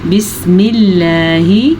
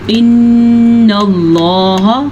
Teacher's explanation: اللہ کے نام سے پہلے زبر آئے یا اللہ کے نام سے پہلے پیش آئے اللہ کا نام پر پڑھا جاتا ہے